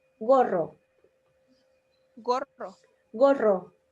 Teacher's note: con la r la lengua como que vibra